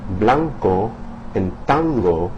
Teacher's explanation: In the words blanco and tango the tongue's drawn further back into the mouth toward the pronunciation zone of those consonants uh the k sound and the g sound.